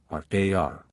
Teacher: carrying the tip of the tongue to the top of the palate, so that being grazed by the air that comes out with force, it yields to it and comes back always to the same place, making a kind of trill